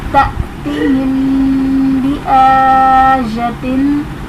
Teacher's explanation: تأتیہم میں حمزہ ساکنہ ہے اس لیے ہم جھٹکا دے کر پڑھیں گے، اور میم ساکن کے بعد حرف با آ رہا ہے تو یہاں پر اخفاء شفوی کا قاعدہ ہوگا، یعنی غنہ کر کے پڑھیں گے۔